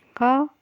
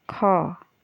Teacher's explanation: क बोलोगे तो कम समय लगेगा, ख बोलोगे तो ज़्यादा समय लगेगा, इसीलिए ख बोलोगे तो वो महाप्राण है